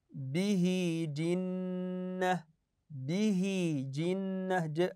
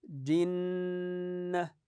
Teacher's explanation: الجيم تحتها كسره والنون مشدده تغن النون بمقدار حركتين مثل الميم المشدده